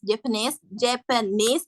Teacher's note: The primary stress is the suffix, and the secondary stress is not the secondary syllables, but in the first.